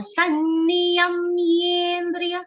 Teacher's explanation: Now here see, ya has a stress of ma. And then half ma is joined with ye and not a. The one mistake that happens is that ye sound comes like a for some people.